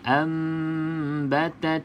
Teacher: macam saya akan baca rapat bibir atas dan bibir bawah. Yang penting juga dengung 2 harakat. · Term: iklab